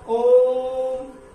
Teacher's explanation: जैसे उच्चारण किया ओम, तो यहां पर जो ओ स्वर है इसका उच्चारण जो है 3 गुना ज्यादा हुआ, 3 मात्रा का हो गया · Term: प्लुत स्वर